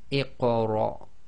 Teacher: we're going to read the hamzatul wasl as if it's got the kasra underneath it. So that's going to be iqra.